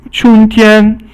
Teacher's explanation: It's springtime and it's all first tone